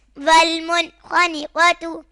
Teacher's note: نون ساکن کے بعد حروف حلقی میں سے خا آ رہا ہے تو اظہار ہوگا، یہاں گنہ نہیں کریں گے